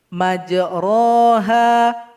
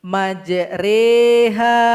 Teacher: Ini artinya kita mesti memerengkan huruf yang mendapati bacaan ini. Huruf ro harus dibunyi mereng. Apa bunyinya? Bunyinya e. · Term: imala